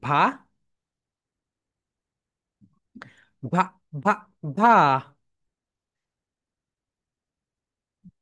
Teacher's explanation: ভি sounds like ভা, ভা, ভা, ভা। শোনো, হালকা একটু টাচ হবে, উপরের দাঁতটা নিচের ঠোঁটের সঙ্গে হালকা টাচ।